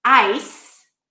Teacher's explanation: Ice has the I diphthong and then an S sound